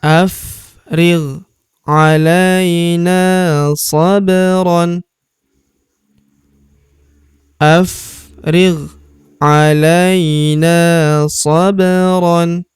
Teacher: Huruf ba berharakat sukun kita pantulkan atau kita qalqalahkan. Sabron tanwin an alifnya tidak dibaca atau dianggap tidak ada.